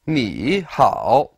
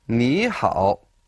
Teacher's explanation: In this instance, ni and hao are both third tone. But when we have 2 third tones together, we change the first one to second tone